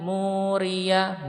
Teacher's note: Fal muriyati, riyati, muriyah, mu panjang 2 ketukan ya